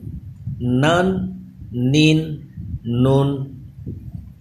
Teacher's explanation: نون پہ خاص خیال رکھیے کہ اس کی آواز ناک میں نہ جائے، منہ سے ادا ہو